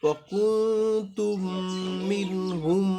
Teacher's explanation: এই মিমটাকে বাদ দিয়া ওই যে পরের মিমটার সাথে মিলাইয়া গুণনা করে পড়বো